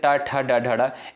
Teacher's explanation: ट वर्ग के अंतर्गत जो आपके वर्ड आते हैं जैसे ट इनका उच्चारण जो है मूर्धा से होता है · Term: मूर्धन वर्ग